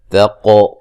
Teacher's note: قاف کو موٹا ادا کریں گے اور قلقلہ کریں گے